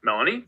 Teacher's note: it kind of bounces on that first syllable and then it goes straight up so yeah we got a low star followed by a high